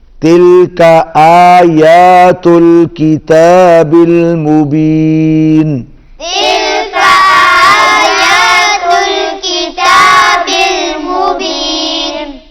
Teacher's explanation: الف کے اوپر بھی کھڑی زبر ہے، یا کے اوپر بھی کھڑی زبر ہے، اس کو ہم تھوڑا سا لمبا کریں گے